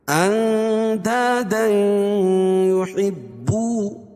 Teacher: تنوین کے بعد ادغام مع الغنہ کے 4 حرفوں میں سے یا ہے